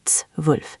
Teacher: It's zwölf, not zwölf. The Z is like ts, and then W is like V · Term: ts sound